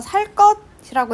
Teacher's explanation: 살 뒤에 기역이 쌍기역으로 발음이 되죠. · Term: 된소리